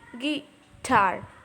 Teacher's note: Gi is a weak syllable and tar is a strong syllable, right? So, guitar is iambic.